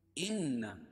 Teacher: ان نون مشدد، اس میں غنہ کریں گے